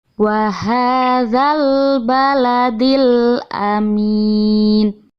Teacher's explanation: Alif Lam yang bertemu dengan Hamzah atau Alif ini alif lam nya dibaca jelas nah ini termasuk bacaan al-qamariyah karena al-nya dibaca jelas lanjut ke